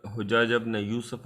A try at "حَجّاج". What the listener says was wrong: ہا کے فتحہ کے ساتھ پڑھیں گے حجاج، اگر حجاج پڑھیں نا تو حاجی کی جمع ہو جاتی ہے حاج کی، تو یہ حجاج ہے، حجاج نام ہے بندے کا جی۔